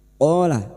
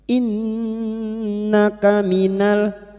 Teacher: Qala fathah diikuti alif, qaf 2 harokat kita panjangkan mat tabi'i. Qala nun yang bertasdid gunnah musyaddada kita dengungkan selama 3 harokat. Innaka minal, lam ta'rif bertemu mim idhar qamariyah, minal mu, nun sukun bertemu dha, nun sukun dibaca samar dan mendengung selama 3 harokat, ikfa hakiki.